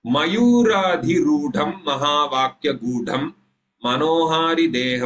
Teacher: म इति अस्ति अक्षरं, तद् ह्रस्वाक्षरम् इति कारणात् तद् लघुः भवति। यू इति दीर्घाक्षरं भवति इति कारणात् गुरुः भवति। रा दीर्घाक्षरम् अतः गुरुः भवति।